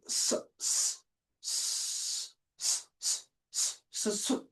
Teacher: No vibration in the vocal cords while pronouncing or producing the sound while articulating the sounds. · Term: voiceless sound